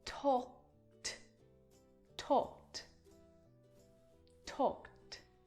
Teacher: But talk is a regular verb, so all you need to do to change the verb to the past tense is add ed. The pronunciation of that ed is just a T sound added to the end of the verb.